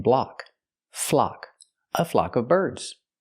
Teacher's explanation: use the open a sound like clock in Block